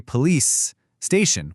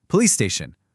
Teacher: You say police station, holding that S just a little longer. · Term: lengthening